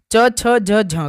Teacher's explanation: च वर्ग के प्रथम चार व्यंजनों अर्थात च, छ, ज, झ को स्पर्श संघर्षी व्यंजन कहते हैं।